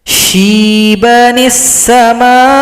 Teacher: Cara gabungnya sekarang kita pakai nun kecil, hamzah wasal abaikan. Nun kecil ini wajib baris di bawah, bunyinya ni, tidak boleh na, tidak boleh no